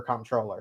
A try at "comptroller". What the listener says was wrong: It sounds like you're saying comptroller, and it's comptroller. I know you're saying comp. Yeah, but you're saying it with a U for some reason. It's the Jersey accent.